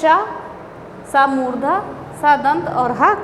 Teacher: तालु से श, सा मूर्धा, सा दंत और हा कंठ